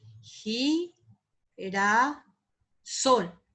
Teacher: Acá hay dos sílabas átonas y tenemos que en este caso el sol es la sílaba tónica